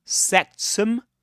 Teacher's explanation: Sectum with a schwa